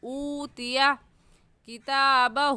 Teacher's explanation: اوتیا میں واو ساکن سے پہلے پیش آ گیا تو واو مدہ ہے، اس لیے ہم کہیں گے ایک الف کے برابر کھینچیں گے